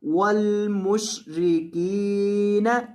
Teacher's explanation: کاف کو لمبا کریں، کاف کے بعد یا مدہ ہے.